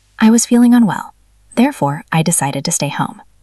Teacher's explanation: Remember the pause after therefore.